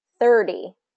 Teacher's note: native speakers are going to reduce that to the D sound, 30. So that will actually, if you change it to a D sound, it won't be confused with the 13, because the 13 has the T, 30 has the D.